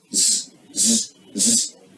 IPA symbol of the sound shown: dʒ